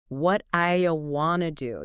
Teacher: that sound at the end of what often changes when it's between vowel sounds becoming more like a quick sound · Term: flapping